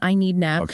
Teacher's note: the D at the end of need Blends into the a sound